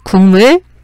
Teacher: 국물 보면 기역과 미음, 자음과 자음이 만나서 비음이 아닌 기역이 비음인 이응으로 바뀌었잖아요. 뒤에 있는 미음은 당연히 비음이고요. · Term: 비음화